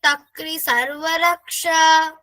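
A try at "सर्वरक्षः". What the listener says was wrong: Sarvarakshaha. That visarga is sarvarakshaha.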